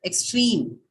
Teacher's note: it has a long vowel, and hence the stress now falls on the last one